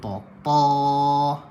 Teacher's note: Ketika mana kita nak sebut huruf sad, kita angkat pangkal lidah.